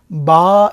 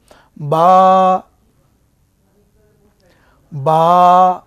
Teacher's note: দুই ঠোঁট থেকে উচ্চারিত হয় এই হরফটি